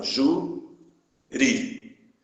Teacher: a sílaba tônica é a penúltima sílaba